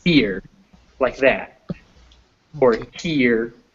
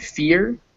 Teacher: that final r is bringing in a schwa next to it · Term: diphthong